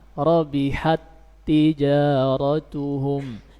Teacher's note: Ta itu huruf yang syiddah, suaranya tertahan.